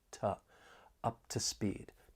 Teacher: For pronunciation, the only thing that I want to point out is that weak, unstressed to, because when it's unstressed, it may sound a bit more like it has that schwa sound